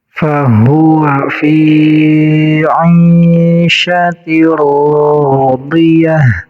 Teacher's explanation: Fi panjang 2 harokat karena menjadi mad tabi'i. Huruf mad tabi'inya iya, kemudian ai dibaca 2 harokat sama menjadi mad tabi'i.